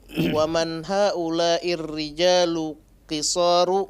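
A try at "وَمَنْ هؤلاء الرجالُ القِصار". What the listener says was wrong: La. Rijalul. Waddih alif lam.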